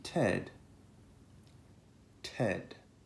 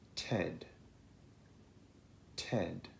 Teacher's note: questa è chiamata unvoiced T perché le corde vocali non vibrano